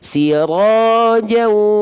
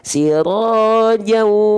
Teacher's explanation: jadi tahan dulu 2 harokat kadar guna, santai. Sirojau. Jangan lupa dengan dengungnya dulu, dengan sengaunya dulu.